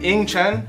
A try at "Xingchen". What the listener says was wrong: No, it's not. It's not Ying. The X is in Chinese.